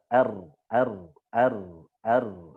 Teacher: Jadi satu getaran, r, satu getaran. Lebih sampai 3, r, itu fasih. Tapi kalau satu itu afsah, paling fasih. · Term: takrir